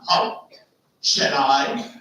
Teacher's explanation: shall is unstressed I is stressed